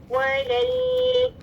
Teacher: लाम साकिन थोड़ी आवाज चढ़ रही